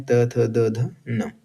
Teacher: चौथा वर्ग है त वर्ग, जिसका उच्चारण स्थान होता है दंत्य